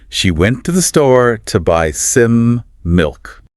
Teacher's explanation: See how to the and some get really quick and light. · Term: weak forms